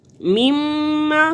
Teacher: میم مشدد ہے تو غنہ ہوگا، 2 حرکت کے برابر ناک میں آواز کو چھپائیں گے